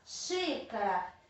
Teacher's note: E quando eu classifico ela quanto a sílaba tônica, eu percebo que não é a última mais forte, não é a penúltima, é a antepenúltima. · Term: proparoxítona